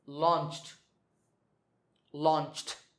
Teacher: the last sound is ch, which is voiceless